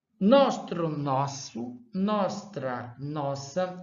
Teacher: em nostro houve aqui uma queda da consoante T e houve aqui uma sibilação desse segundo R